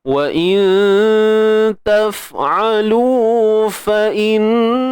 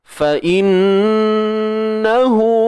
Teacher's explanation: pastikan dengung tu dia sempurna sampai lah ke pangkal hidung kita ni, bunyi pekat, padat. Jangan buat macam malu-malu.